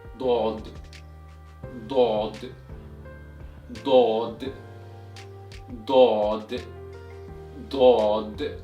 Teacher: the tip of your tongue is placed right behind the upper front teeth and you touch it but not pressing it. Then your jaw is moving about when you pronounce it.